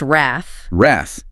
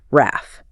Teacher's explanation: we need to emphasize that short a sound, right? Like the a in cat, not a longer a sound that you sometimes hear in error.